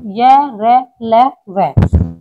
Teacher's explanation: अंतस्थ व्यंजन वे व्यंजन होते हैं जिनका उच्चारण स्वर और व्यंजनों के बीच का प्रतीत होता है। इनका उच्चारण करते समय मुख का कोई अंग दूसरे अंग को पूरी तरह स्पर्श नहीं करता, इसलिए इन्हें अंतस्थ व्यंजन कहते हैं।